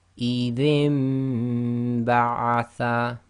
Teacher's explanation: So we're changing the sound of the noon sakin to a mim sakin. So instead of saying idhin, again with iqlaab we do ghunna, we have to say idhin ba'atha.